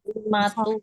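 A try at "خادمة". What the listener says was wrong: Tun. Kali tanwin, Bu ya. Dimatun.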